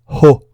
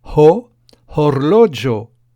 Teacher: Le H se prononce en expirant un peu d'air, comme dans l'anglais hat, chapeau.